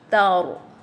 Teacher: Dia ra tu berbunyi je pun tebal ya. Kita kata sifat ra adalah tebal ataupun istilahnya tafkhim ya.